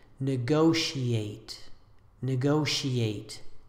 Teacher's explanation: Avoid combining these last two vowels into a diphthong.